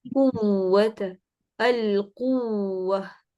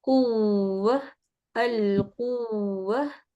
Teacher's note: वाव के वक़्त होंठ गोल होंगे, यानी इसको कुव नहीं पढ़ेंगे, बल्कि कू ही को, यानी गोल होंठ पे ही स्ट्रेस देंगे और छोटा करके इसको कुव्व, अल कुव्व। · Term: वाव मुशद्दद